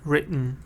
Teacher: Written in British, yes, written. But in American, written. So it's different. Written. You don't really hear the t.